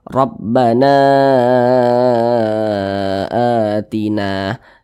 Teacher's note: ini mad badal panjangnya dua harakat atau kira-kira dua ketukan sama dengan mad thai'i